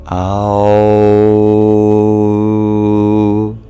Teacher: we bring the main place of resonance to our throat